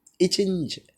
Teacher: இரு மெய்களும் நாவின் இடைப்பகுதி அன்னத்தின் இடைப்பகுதியை பொருந்துவதால் பிறக்கின்றன